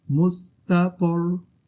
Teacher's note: जैसे त्वा और रा यहाँ पे मोटा पढ़ा जाएगा